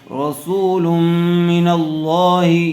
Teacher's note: تنوین کے بعد حروف یرملون میں سے میم آ جائے تو غنہ کے ساتھ ملا کر پڑھیں گے ، اس کو ادغام مع الغنہ کہتے ہیں۔ رسول من اللہ،